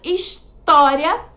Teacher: história, a sílaba tônica é o tó, porque é a sílaba que tem o acento.